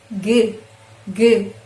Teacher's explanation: Terdapat getaran pada pita suara, maka itu termasuk voiced sound